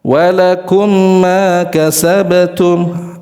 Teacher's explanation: tidak menyempurnakan guna. Terlalu buru-buru ketika melepas mim